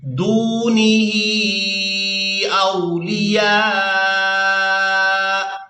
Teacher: اب یہاں پر ہم کریں گے وقف، تو وقف کی صورت میں حمزہ جو ہے یہ ساکن ہو جائے گا، یا کو الف مدہ اور مد کی وجہ سے کھینچتے ہوئے اس حمزہ ساکن کے ساتھ ملائیں گے۔ جب ہم لاسٹ میں حمزہ کو ادا کریں گے تو جھٹکے کے ساتھ آواز ادا ہوگی